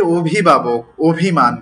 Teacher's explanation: তাহলে এই যে অভিভাবক অভিমান স্বরে অ এর উচ্চারণ হচ্ছে ও এর মত।